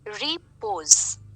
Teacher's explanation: out of these two syllables the first syllable is unstressed the second syllable is stressed